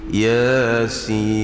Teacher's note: Sinnya dibaca dengan enam harakat, kerana kalau kita heja dia sin ya nun, jadi sin.